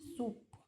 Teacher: the S slightly rounded because of the following rounded vowel